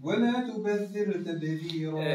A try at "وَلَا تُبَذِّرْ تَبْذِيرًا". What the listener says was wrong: ما انقلقلوش الراء تبذر تبذرت لا ولا تبذرت فهمت ولا انا ما نقولش تبذر تبذرت تبذرت تعاودها